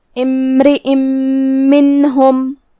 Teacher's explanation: ادغام کا معنی ہے حرف کو حرف میں داخل کرنا، تو ہم یہ تنوین کو میم میں ملاتے ہوئے غنہ اور تشدید کے ساتھ یہ حکم کو ادا کریں گے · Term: ادغام بغنہ